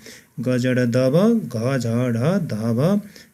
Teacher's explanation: फोक्सोबाट सास बाहिर निस्कँदा स्वर चिम्टीमा कम्पन बढी भई आवाज बढी आउने स्थितिमा उच्चारण हुने व्यञ्जन वर्णहरू नै घोष हुन्। कि फोक्सोबाट उच्चारणको क्रममा फोक्सोबाट सास बाहिर निस्कँदाखेरि स्वर चिम्टीमा कम्पन बढी हुन्छ, सास बढी यानि कि आवाज बढी आउँछ, त्यस्तो स्थितिमा उच्चारण हुने व्यञ्जन वर्णहरू नै घोष हुन्।